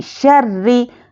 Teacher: رو پر تشدید ہے، سختی کریں گے، زیر ہو تو باریک پڑھیں گے